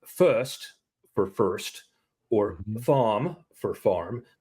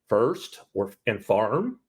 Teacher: The West Country accent pronounces the R's.